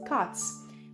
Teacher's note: we pronounce the ending s with the sound of s because the sound T is voiceless